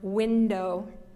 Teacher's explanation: We have an N and a D together, but one ends one syllable and one starts the next syllable